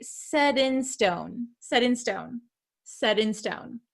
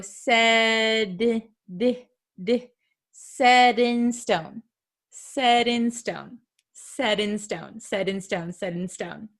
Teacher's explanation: sometimes it is something called a flap T it sounds like a soft D sound